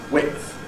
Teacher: And those who basically say /wɪtθ/ can also pronounce it with a glottal stop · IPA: /wɪʔθ/